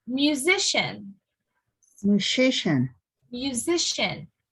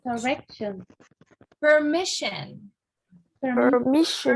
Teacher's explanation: the syllable right before the shin part is the one that is stressed, okay? So just before it, regardless of how many syllables are in the word, the one right before it, that's the one that's stressed.